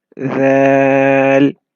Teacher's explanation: It comes from the same makhraj as Tha. The tip of your tongue will touch the edges of the top two front teeth, and it will be read very softly. Dhal. So the tip of your tongue will be seen between your teeth. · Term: Dal